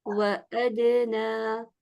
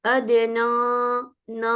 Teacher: جب نون اپنی حرکت کے ساتھ ہوتی ہے تو اس کے اوپر 5th لیول کا غنہ ہوتا ہے، اس کا مطلب ہے کہ بہت ہی کم غنہ ہے، سب سے لوویسٹ لیول کا غنہ ہے۔